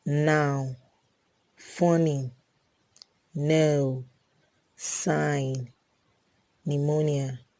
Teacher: demand same the next easy alveolar nassau sound na na na is a voiced alveolar nasal sound · N. N is a voiced alveolar nasal sound